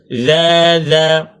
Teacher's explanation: Kita kena keluarkan kepala lidah kita kerana makhrajnya hujung lidah bertemu dengan hujung gigi kaci atas. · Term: huruf zal